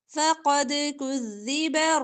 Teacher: قاف موٹا دال پر کلکلا